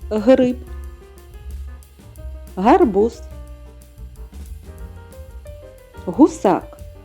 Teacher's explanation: повітря зустрічає перешкодив звучить твердо Отже приголосний твердий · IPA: [г]